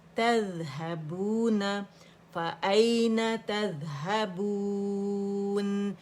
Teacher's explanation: مد عارض للسکون ہم نے 4 کاؤنٹس رکھی